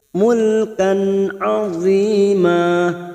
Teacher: Mulkan fathah tanwin bertemu ain idhar halqi. Fathah tanwin dibaca jelas.